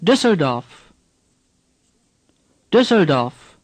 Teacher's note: Say Düsseldorf. The E is hardly pronounced.